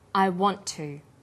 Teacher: The final t sound in want is held slightly longer on the tongue. Then to is pronounced. The t sound is pronounced only once. I want to. This type of linking is called consonant plus same consonant linking.